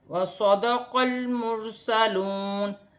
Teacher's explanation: وَصَدَقَ الْمُرْسَلُونَ، قاف کو لام کے ساتھ ملا کر پڑھا جائے گا، لام ساکن ہے، پھر را ساکن ہے، را کو موٹا پڑھا جائے گا کیونکہ را ساکن سے پہلے پیش ہے تو را موٹی پڑھی جائے گی۔ واو ساکن سے پہلے پیش ہے تو واو مدہ بن رہی ہے، اسے ایک الف کی مقدار کھینچ کر پڑھا جائے گا، واو کی صورت میں زبر گر جائے گی اور نون ساکن ہو جائے گی۔